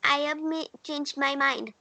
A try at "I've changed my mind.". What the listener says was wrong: Again, I have नहीं बोलेंगे बेटा. I've changed my mind. I've changed my mind. फिर भी I के बाद जो है कि जो मात्रा आती है ना आप उसको हटाओ.